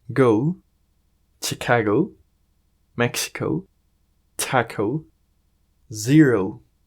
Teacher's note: algunas palabras terminadas en o en inglés generan el sonido ou